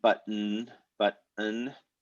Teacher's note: the schwa vowel and the n are really together in time so there's not really a separate vowel happening before the consonant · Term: syllabic